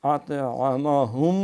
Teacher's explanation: حمزہ نہیں پڑھنا، عین ہے